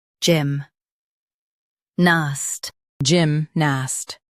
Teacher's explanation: Stress gym and keep nast soft.